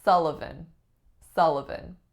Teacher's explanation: Sullivan Sullivan three syllables our trick in this one is that the first syllable looks like the letter U but it makes the sound ah as in up